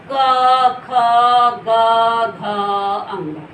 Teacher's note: ये गले से ही निकले, तो इसे कंठस्थ व्यंजन कहते हैं · इन्हें कंठस्थ व्यंजन कहते हैं, जो गले से होते हैं। आपके पेज नंबर 6 में दिया हुआ है जिनकी आवाज जो है जो गले से होकर के निकलते हैं।